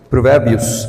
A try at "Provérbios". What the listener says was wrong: não estamos na França, então nós pronunciamos o S. Provérbios capítulo.